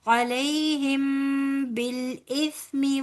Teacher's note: میم ساکن کے بعد با آ رہا ہے، یہاں پر اخفاء شفوی ہوگا